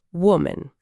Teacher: É um som bem suave, né? O A no finalzinho soa como aquele famoso schwa do inglês, que é um som super neutro, um respiro quase, não é um A abertão latino.